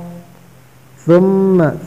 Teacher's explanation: ثم سا کو سے ادا کرنا، سا اس طرح ادا ہوتا ہے، زبان کی سر دو سامنے والی اوپر دانتوں کی سر سے لگا کر ادا ہوتا ہے. ثم میم پر تشدید ہے، میم پر حرف غنہ ہوتا ہے.